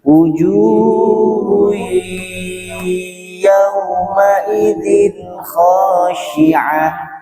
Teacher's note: Diulangi lagi dengungnya dua ketukan